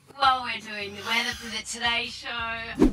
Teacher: another very noticeable feature of the Australian accent is the upward inflection at the end of sentences